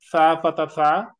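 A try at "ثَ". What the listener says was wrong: থা। হ্যাঁ হ্যাঁ, সা না থা।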